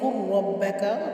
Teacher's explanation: قُرْ رَبَّكَ تفخیم کے ساتھ پڑھتے ہوئے ربا یعنی را کو موٹا پڑھیں گے